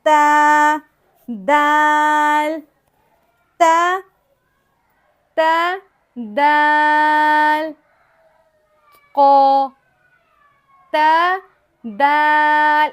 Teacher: تا زبان کے سرے کو، جسے عربی میں رأس اللسان بھی کہتے ہیں، زبان کی نوک کو ہم لگائیں گے اوپر کی دانتوں کی جڑ سے تو تا دال تھو ادا ہوگا۔